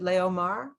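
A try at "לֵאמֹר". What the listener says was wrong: There's no vowel with the aleph.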